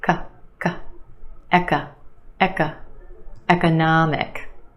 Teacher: The third syllable is your stressed syllable, na, the ah sound, economic. And we have a schwa in the second syllable